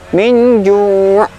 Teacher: Ju' ainnya seperti yang pembahasan sebelumnya, huruf ain ketika sukun maka sifatnya adalah tawasud, tidak serta-merta syiddah